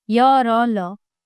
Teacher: इन वर्णों के उच्चारण के समय जीभ मुख के किसी भाग को स्पर्श नहीं करती। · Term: अंतस्थ व्यंजन